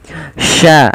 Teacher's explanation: posisi makhraj huruf Sin adalah di tengah lidah kita